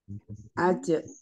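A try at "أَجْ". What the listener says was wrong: Aj. Aj. Aj. Aj. Jangan ditahan. Aj. Lepas saja. Aj.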